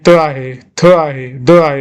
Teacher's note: जिभेचा स्पर्श, आपला दाताला स्पर्श करून ते बाहेर पडतात.